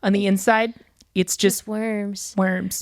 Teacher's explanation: It's taking the Zooey Deschanel vocal fry and then like raising it just out of vocal fry. So it keeps the husk, but you're raising the pitch.